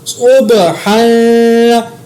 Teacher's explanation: صاد کو موٹا ادا کیا, با پر قلقلہ کیا, ہا کے اوپر اخفا کیا کیونکہ آگے ضاد اخفا کا ہے.